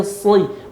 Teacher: Bukan si, tapi sli. Masih ada sifat tebalnya.